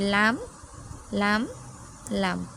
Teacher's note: তাহলে উপরের দাঁতের মারি মানে গোড়ার সাথে লেগে উচ্চারিত হয় লাম। জিহবার আগার কিনারা উপরের দাঁতের মারি সাথে লাগিয়ে উচ্চারিত হয় লাম।